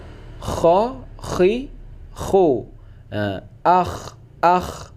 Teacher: Kha ini getarnya lebih berat, bahkan perih tenggorokan saat kita membaca. Bunyinya yaitu kha. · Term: huruf kha